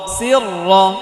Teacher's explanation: এটা র মোটা হবে কারণ র এর মধ্যে জবর, র এর মধ্যে যদি জবর বা পেশ হয় তাহলে র মোটা করে পড়তে হয়।